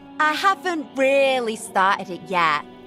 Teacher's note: Her pronunciation of strut vowels, >> I'm the [ __ ] skull. >> and the glottalization and flapping of her t's and r's